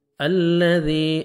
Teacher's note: الذی، الف لام سے پہلے ہمیشہ زبر آئے گا، ذال کو نرمی سے ادا کر کے 1 سیکنڈ کھینچنا ہے،